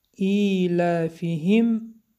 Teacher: ایلافهم حرف میم اظهار شفوی، میم روشن خوانده می شود.